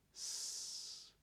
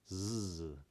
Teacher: an S is voiceless, a z is voiced